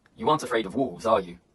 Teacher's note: If the answer is certain, the intonation falls. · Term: question tags